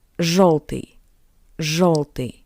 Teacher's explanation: after zh, yo sounds closer to the sound of o. O.